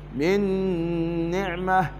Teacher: نون ساكنة حكمها الإدغام بغنة لذكر النون بعدها والنون من حروف الإدغام بغنة